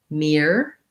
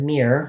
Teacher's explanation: mirror has the ear diphthong in the first part, and it has just an for these letters OR.